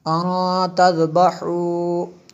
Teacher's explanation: نون ساکن کے بعد تا ہے اور حروف اخفا میں سے یہاں پہ اخفا ہوتا ہے